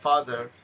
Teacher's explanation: এই যে রটা উচ্চারণ হলো, এটা আমেরিকান অ্যাকসেন্টে, আমেরিকান প্রনাউন্সিয়েশন সাউন্ড